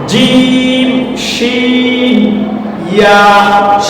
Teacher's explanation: জিম শিন ইয়া, এই তিনটা উচ্চারিত হয় জিহ্বার মধ্যভাগ এবং এর সোজা উপরের তালু